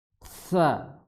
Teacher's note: Kalau tsa itu menghilangkan sifat syiddah. Jadi akhirnya dia rakhawah ya.